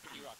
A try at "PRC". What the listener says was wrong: You don't pronounce the of,